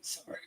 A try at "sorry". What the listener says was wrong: there's no a in sorry there's not a you either